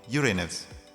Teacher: the astronomical community eventually settled on the name Uranus, with the stress on the first syllable